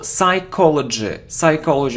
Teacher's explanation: no we don't pronounce P